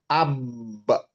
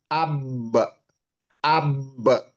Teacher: huruf ba itu di kedua bibir, bertemunya kedua bibir ya.